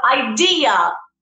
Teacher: the intonation is in the second syllable